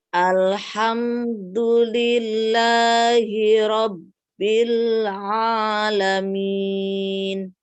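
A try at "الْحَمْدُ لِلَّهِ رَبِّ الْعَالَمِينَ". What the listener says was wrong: Nah, ini lebih bagus. Kalau hanya ainnya aja. Ainnya masih kurang tampak ya. Makhraj ainnya kurang tampak.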